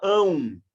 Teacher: terminou com AM, você produz um som de A nasal com U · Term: ditongo